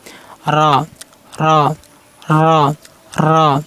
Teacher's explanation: জিহ্বার আগা পিঠ ও তার বরাবর উপরে তালুর সাথে লেগে উচ্চারণ করবেন। এই দেখেন জিহ্বার আগাটা একটু বেগবে, এই দেখেন জিহ্বার আগার একটু বেগবে, এই তালুর সাথে লাগছে জিহ্বার আগা, এই দেখেন তালুর সাথে লাগছে, এই দেখেন তালুর সাথে লাগছে জিহ্বার আগা, একটু আগাটা বেগে উচ্চারণ করতে হবে। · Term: র হরফ